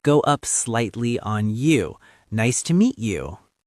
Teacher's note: That friendly, rising tone makes you sound welcoming.